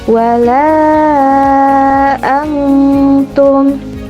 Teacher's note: nun sukun dibaca samar-samar karena diikuti dengan huruf ikhfa, yaitu ta. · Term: ikhfa hakiki